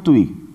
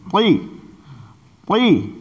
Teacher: ہونٹ کی گولائی چونکہ یہ واو کا مخرج ہے، اس لیے ایک واو کی آواز ایکسٹرا پیدا ہو رہی ہے